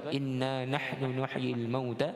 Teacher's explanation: bacaan inna nahnu nuhyil mauta, dengung pada nun syaddah, wajib bergunnah.